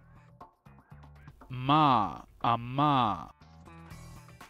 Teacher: 嗯是双唇鼻音，说是双唇闭起来时发出的鼻音